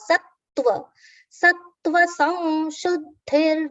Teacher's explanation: the anuswara on sa has been pronounced as ma, nasal ma.